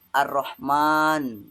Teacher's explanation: Sedangkan untuk samsiah itu alif lamnya tidak dibaca ar-rahman. Nah, di situ tidak ada dibaca alif lamnya. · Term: alif lam samsiah